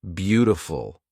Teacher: It's almost a D that is almost an R.